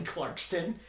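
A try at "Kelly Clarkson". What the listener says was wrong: Clarkson. There's no T.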